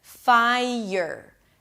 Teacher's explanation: the 'i' of the 'fai' connects with the 'y': 'fai-y'r'.